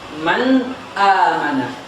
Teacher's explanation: Nun adalah makhrajnya adalah ujung sisi lidah, ya. An bertemu dengan, ya, langit-langit atas, ya, bertemu dengan langit-langit atas. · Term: izhar